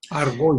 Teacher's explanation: en vez de la G de Argüello, la UE, es la UE, el diftongo pasa a ser una O, y el resto se mantiene.